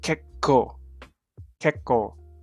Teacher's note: With the K sounding like k rather than ko. You'll hear a bit more extension of the K. · it's pronounced as if there's 2 consonants, so it'll be kekko.